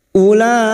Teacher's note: mad wajib muttasil lima harakat kita panjangkan